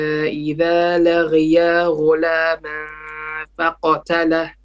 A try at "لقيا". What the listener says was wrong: إذا لقي قاف no لغيا.